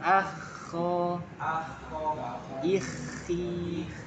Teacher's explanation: karena dia rokhwa betul rokhwa mengalir dulu suaranya